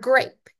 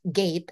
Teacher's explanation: So maybe we're talking about clusters that have R's in them, like in the word grape. So that G and that R are reduced to just the G, and then we have gape instead of grape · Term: cluster reduction